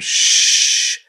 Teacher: the air comes out and flows like sh you can hold it out a long time